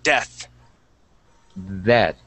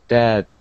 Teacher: we say the word death and our tongue goes between our teeth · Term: th sound